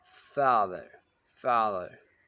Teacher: Open front unrounded vowel as in father.